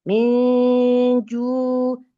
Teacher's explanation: nun sukunnya siap-siap ke makhraj dari huruf jim. Huruf jim itu makhrajnya dari tengah lidah yang bertemu dengan langit-langit atas, nempel dia. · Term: ikhfa hakiki